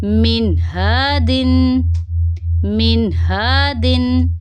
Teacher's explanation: نون ساکن کے بعد ہا ہے، تو یہاں پہ بھی ہم نون کی آواز کو ظاہر کریں گے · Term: اظہار